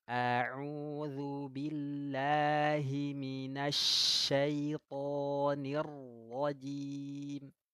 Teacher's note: yang benar gunakan huruf shin yang memiliki sifat at-tafashi, bukan sin yang asofir.